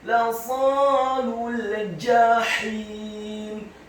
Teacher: Kata lasalul, huruf lamnya dibaca tipis, fathah 1 harokat. Huruf shadnya dibaca tafkhim, tebal dengan posisi bibir bawah kita agak tertutup, dibaca fathah 2 harokat karena setelahnya ada alif. · Huruf shadnya dibaca tafkhim, tebal dengan posisi bibir bawah kita agak tertutup, dibaca fathah 2 harokat karena setelahnya ada alif. Kemudian huruf lam yang kedua dibaca tipis, dhammah, cukup 1 harokat saja karena setelahnya langsung disambung huruf lam yang sukun. Lasalul, ditarik, lasalul jahim.